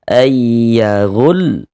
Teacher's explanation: Jadi ujungnya itu kita naikkan intonasi suara kita.